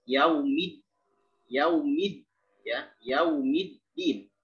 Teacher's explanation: Dal dia punya sifat syiddah, maka dia mesti dijelaskan dengan baik. Yaumid, ya, yaumiddin, bukan yaumiddin.